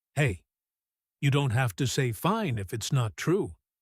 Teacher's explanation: Make your voice quiet, gentle, unhurried. Let there be a small pause after hey. Like you're carefully opening a door rather than bursting through it.